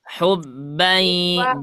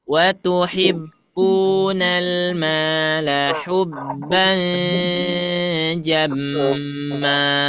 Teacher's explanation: Langsung saja fullkan suaranya di hidung.